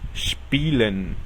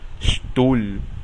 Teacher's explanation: La combinación de letras SP suena SHP y la combinación ST suena SHT.